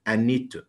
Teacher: طبعا to ما هي نطقتش to، ده بنسميه weak forms